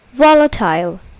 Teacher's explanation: the first syllable is accented